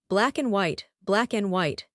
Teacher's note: I am listening for and, but the speaker just makes a tiny noise.